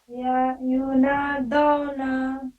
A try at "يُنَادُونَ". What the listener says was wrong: یہ او نہیں پڑھنا. مجھول آواز ہے یہ. نادون